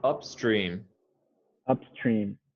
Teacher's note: i would say both syllables uh with equal emphasis